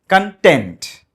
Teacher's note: మీరు హ్యాపీగా సంతృప్తిగా ఉన్నారు అని చెప్పడానికి స్ట్రెస్ వెనక ఉండాలి. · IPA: /kənˈtent/